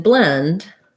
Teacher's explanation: light l no vowel between b and l